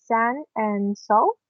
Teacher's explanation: it was a voiceless alveolar fricative. We know it was S, and we choose the word sun and soul.